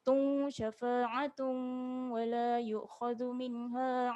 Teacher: Syafa'atun, dengung 2 harakat. Tung, kita masukkan sikit ke waw ni, moncong sikit.